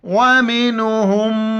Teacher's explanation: میم پر ناک میں آواز پیدا کرنی ہے، غنہ کرنا ہے